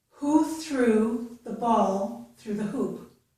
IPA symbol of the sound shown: u